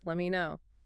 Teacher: The T in let drops before the M and me reduces let me know.